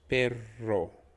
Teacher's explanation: so you're rolling the r just one more time it's as if there are two sounds of the letter r